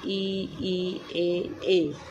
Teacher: जिन स्वरों के उच्चारण में जीभ का अग्र भाग काम करता है उन्हें अग्रस्वर कहते हैं, जैसे ई, ए।